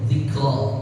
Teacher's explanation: Ya, jangan ditambahin seakan-akan ada huruf hamzah. Jadi dzikra, ra, bukan ra, bukan ra, tapi ra.